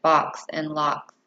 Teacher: produced with the tongue relatively flat and low in the mouth and with the mouth open a little wider than four high vowels the sound can be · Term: low open vowel sound